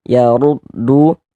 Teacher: Huruf ra memiliki harakat domah dibaca tebal dibaca tapkhim